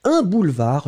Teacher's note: Un boulevard, le D final n'est pas prononcé.